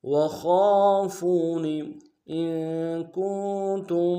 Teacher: حمزہ کو نون ساکن کے ساتھ ملانا ہے، نون ساکن میں غنہ کریں گے